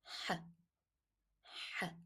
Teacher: You need to say it as if h, but with a stress when you are vocaling the sound, stress on your larynx. You know, when you are just touching a hot thing, you make that is the sound.